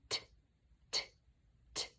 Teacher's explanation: It is not a continuant because when we say t, it is a very quick sound. It's cut off quickly. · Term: stop